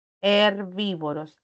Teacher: la b y la v letras diferentes pero que tienen un mismo fonema fonema bilabial